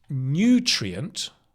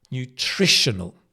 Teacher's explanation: notice nutrient, but the adjective is nutritional. The stress changes to the tri.